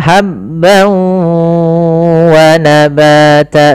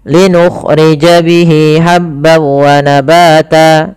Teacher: masukkan tanwinnya ke waw, hilang suara nunnya menjadi suara waw, kemudian ditahan gunnahnya. Maka habban wa nabata sepanjang 2 harakat lebih sedikit.